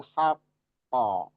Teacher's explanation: kalau berhenti begitu dia qalqalahnya jadi kubro atau ada jeda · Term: qalqalah kubro